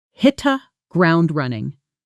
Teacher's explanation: Hit the often blends into something closer to hitta and ground running flows together smoothly almost like one long word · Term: connected speech